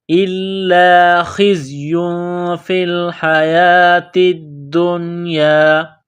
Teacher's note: یا کے اوپر تنوین ہے، اس کے بعد فا ہے، حروف اخفا ہے، غنہ کریں گے۔ إِلَّا خِزْيٌ فِي الْحَيَاةِ الدُّنْيَا، یا کے اوپر کڑا زبر ہے، ایک الف کے لمٹ میں کھینچنا ہے، تا کو دال کے ساتھ ملانا ہے، دال میں سختی کرنی ہے۔